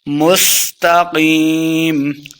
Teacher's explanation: قیم، مستقیم، جب سین پڑھیں گے تو سیٹی کی آواز آئے گی